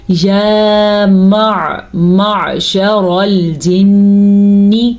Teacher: را کو ہم نے پر پڑھنا ہے کیونکہ را کے اوپر زبر ہے، پر کا مطلب ہے موٹا کر کے پڑھنا ہے۔